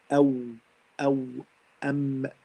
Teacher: Waw comes from the two lips.